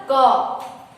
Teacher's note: तो उसमें दो ध्वनि है ना, एक अ की भी ध्वनि सुनाई दे रही है। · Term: व्यंजन